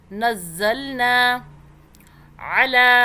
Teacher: ایک الف کے برابر لام کو کھینچا، کھڑا زبر کو ایک الف کے برابر کھینچتے ہیں